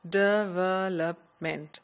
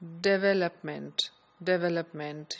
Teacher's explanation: circle speaker speaker of English would be something like development so there will be almost equal stress on all the syllables